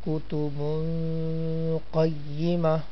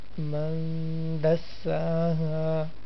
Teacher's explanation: It will be ikhfa, like kutubun qayyima. We'll take our voice partially into our nose for a while.